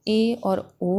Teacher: अर्ध संवृत स्वर की अगर हम बात करें तो ए और ओ आता है